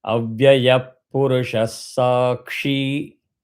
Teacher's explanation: Kshi again you have to consciously give dirgham.